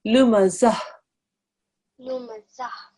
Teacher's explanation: Okay, there is no ta sound at the end when you do a waqf. The ta marbuta becomes a ha sakin